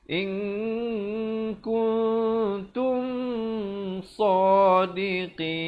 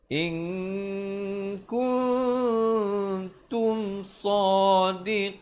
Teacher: Bunyi saja tum terus masuk sadiqin. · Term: izhar syafawi